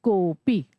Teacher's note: जो मात्रा होती है उसी को हम थोड़ा सा और खींच के बोलते हैं, प्लुत स्वर में बोलते हैं, 3 मात्राओं में बोलते हैं।